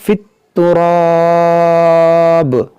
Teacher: یہاں پر دیکھیں وقف مطلق ہے، یہاں پر وقف کریں گے تو اس با کو ساکن کریں گے، اور جب با ساکن ہوگا تو یہ حروف قلقلہ ہے، اس میں قلقلہ ہوگا